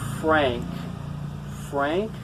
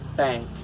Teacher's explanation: Frank, I'm not using my tongue. I'm using my lips. And thank, I'm not really using my lips. I'm using my tongue.